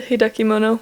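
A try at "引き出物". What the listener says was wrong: Yeah, we'll come eat your hikidemono. Yeah, there's no ki after de. Hikidemono.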